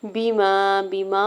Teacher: بیما، بیما میں میم کے اوپر زبر ساتھ الف اٹیچ ہے، اس کے اوپر مد منفصل ہے، 4 سے 5 حرکت کھینچ کے ادا کریں گے